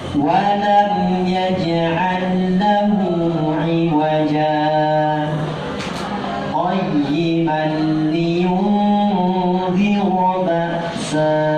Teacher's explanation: Bunyinya seperti wakaf persis, hanya tidak tarik nafas kembali, hanya tahan nafas, kemudian lanjut suara tanpa mengambil nafas lagi. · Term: saktah